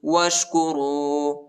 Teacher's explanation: وہ کو شین کے ساتھ ملائیں گے، ٹھیک ہے. شین ساکنہ ہے